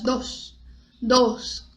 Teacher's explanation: bem fechado esse O